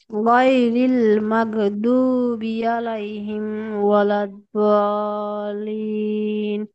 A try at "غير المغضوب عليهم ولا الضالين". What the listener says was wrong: মাশাআল্লাহ মাশাআল্লাহ।